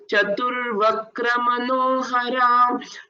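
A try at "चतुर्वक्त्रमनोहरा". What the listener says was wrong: I heard it as Vakra once or twice. So please practice Bhagini.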